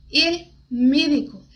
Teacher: Só que esse E, não existe esse E no espanhol, é um E fechado.